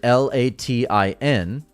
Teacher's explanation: We move our tongue to make the T, and there's no pronunciation of it. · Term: stop consonants